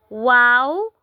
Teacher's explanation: वाओ होठों को गोल करने से अदा होता है। ये भी हरूफ शफविया हैं जो होठों से अदा होते हैं।